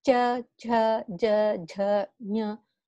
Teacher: the tongue is touching the roof, cha, cha, right? So they are called talu